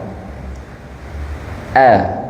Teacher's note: Hamzah itu pengucapannya atau makhrajnya terdapat di pangkal tenggorokan. A bunyinya A.